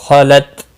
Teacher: دال ساکن پر قلقلہ ہوگا، خالت، تا ساکن کو ہلانا نہیں، اور وقف کی اگر یہاں پر وقف کر یہاں پر بھی وقف جائز ہے، تا ساکن ہی رہے گا، اور ملانے کی صورت میں تا ساکن ہی پڑھیں گے۔